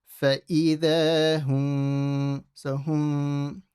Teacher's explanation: And then the next letter is a ba. What will happen is you'll read the mim with a light ghunna. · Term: ikhfa shafawi